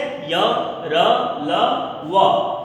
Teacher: इनका उच्चारण करने में हमें ऐसा लगता है कि ये जो वर्ण है हमारे मुख के अंदर में स्थित है, जैसे य र ल व, अर्थात जीभ जो है मुख के किसी भाग को पूर्ण रूप से स्पर्श नहीं करती है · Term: अंतःस्थ व्यंजन